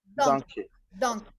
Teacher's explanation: So the first syllable will receive the stress, right?